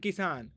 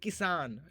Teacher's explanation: तो इसमें इ जो है हमको ज्यादा उस पे जोर नहीं देना है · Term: इ की मात्रा